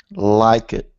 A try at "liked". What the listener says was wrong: Okay, there's your problem. This one is pronounced liked. This is actually a T sound exactly like walked. Walked, liked, okay?